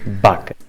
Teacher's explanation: Característica muito típica dos sotaques do Norte é que pronunciam o V como sendo um B.